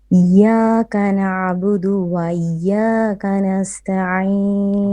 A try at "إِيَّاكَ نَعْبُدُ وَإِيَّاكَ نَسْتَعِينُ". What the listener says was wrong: So make your alif on before the iya a lot more clear, and then إياك نعبد وإيا. Make every letter distinct in and of itself.